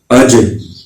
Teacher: اس میں قلقلہ کیا ہے کیونکہ یہ حروف قلقلہ کا ایک حرف ہے